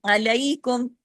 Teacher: عین کو عین کی طرح، عین الف کی طرح نہیں